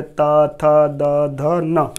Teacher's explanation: ता वर्ग के जितने भी व्यंजन आते हैं, जैसे हमारा पहला अक्षर कौन सा हो जाएगा, व्यंजन का ता, व्यंजन का था, व्यंजन का द, व्यंजन का धा, व्यंजन का ना, इन जितने भी ये हमारे ता वर्ग के व्यंजन आते हैं इनको बोलते वक्त हमारी जीभ दांतों को स्पर्श करती है